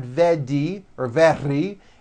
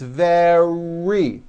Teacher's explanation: make sure that the r sound is strong and your lips are coming forward your tongue is back and you push out the are